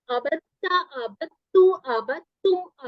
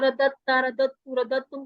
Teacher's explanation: عبدتا عبدتو عبدتم عبدنا، یہ جو تین ہمارے سیغے ہیں تا والے، ان میں ہم نے دال کے ساتھ جب ہم نے اضافہ کرنا ہے آبادہ کے بعد، جیسے ہم نے تا پڑھنا ہے تو یہاں پر ہم نے تشدید بھی لگانی ہے، اور اس کو پڑھنا ایسے ہے کہ دال اور تا کی آواز آپس میں مرج ہو جائے گی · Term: مدغم